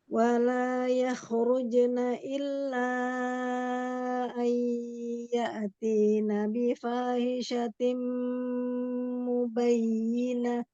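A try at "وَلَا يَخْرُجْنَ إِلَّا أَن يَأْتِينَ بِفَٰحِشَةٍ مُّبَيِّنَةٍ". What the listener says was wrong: Iya, mau lebih terasa lagi ketika ketemu idgham bi gunnah ya, gunnahnya mau lebih lama lagi. Dan sedikit setengah suaranya masuk ke hidung ya. Nah, hamzah tabrak shiddahkan si hamzah sukunnya.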